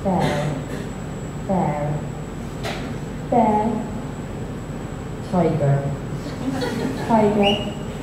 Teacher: one of the key features of this local accent is the fact that we pronounce in Devonian the R at the end of syllables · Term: R sound